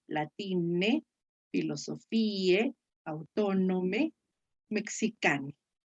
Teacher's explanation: en la pronunciación italiana cierra el diptongo AE y otros diptongos más en un solo sonido vocálico